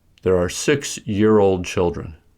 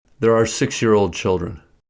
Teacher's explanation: To indicate that children is modified by two ideas, both modifying words, 6 and year-old, are stressed and there is a short pause after 6. Also, for rhythm, stress is shifted to year from old. · To indicate that 6-year-old is a single idea, there is no pause and only 6 is stressed.